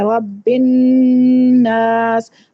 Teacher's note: اس نون مشدد کو غنے کے ساتھ ادا کرتے ہیں. رب الناس، 2 حرکت جتنا آپ نے آواز کو ناک کے اندر روک کے پھر اس کو مد کرنا ہے. · 2 حرکت جتنا آپ نے آواز کو ناک کے اندر روک کے پھر اس کو مد کرنا ہے. ٹھیک ہے، جلدی سے نہیں پڑھنا رب الناس ملک الناس، اس طرح نہیں، اس کا پوری طرح سے اس کا غنہ کرنا ہے.